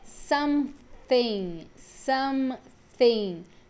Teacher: nesse TH, a gente tem o TH desvozeado, né? Que é a linguinha no dente.